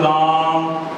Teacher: रा जो आ का साउंड है वो 3 गुना अधिक लंबा आ रहा है, आ को लंबा खींचा जा रहा है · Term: प्लुत